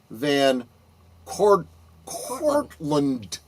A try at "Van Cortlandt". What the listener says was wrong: You don't pronounce a T at the end, it's Cortland.